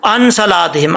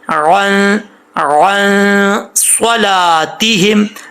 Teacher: ہم عن صلاتہم، یہاں پہ اکثر لوگ پڑھتے ہیں ان صلاتہم، عین کو حمزہ پڑھ جاتے ہیں، عین پڑھتے نہیں ہیں بالکل